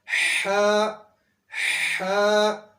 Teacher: اس کے بعد ہا حروف حلقی میں سے پڑھا جاتا ہے، دوسری ہا بھی حروف حلقی میں سے ہے، لیکن یہ جو ہا ہے یہ حلق کے درمیان میں سے ادا ہوتی ہے، حلق کے ساتھ رگڑ کھاتے ہوئے یہ حرف ادا ہوتا ہے